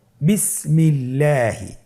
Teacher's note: আল্লাহ শব্দের দ্বিতীয় লামের আগে এখানে জের এসেছে, আপনারা জের দেখতে পাচ্ছেন। এই জন্যে আল্লাহ শব্দের দ্বিতীয় লামটিকে বারিক করে পাতলা করে পড়তে হবে